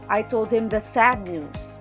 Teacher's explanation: the emphasis is on the adjective sad declaring the kind of news